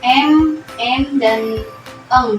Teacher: udara itu tuh Ee dialirkan lewat rongga hidung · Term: bunyi nasal